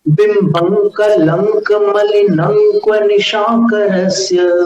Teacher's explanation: यहां पर आप देख लीजिएगा 13वें काव्य में बिंबं कलंक मलिनंक्व निशाकरस्य। अब देखिए, आप अनुस्वार को अपन आगामी अक्षर में मिला रहे हैं।